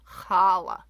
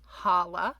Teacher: it's not a soft H sound, challah. It's actually a guttural H sound